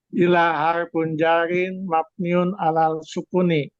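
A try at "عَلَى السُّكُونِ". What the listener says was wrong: alas bukan alal alas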